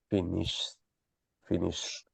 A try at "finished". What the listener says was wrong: With the T, the pronunciation, I mean pronouncing the T at the end.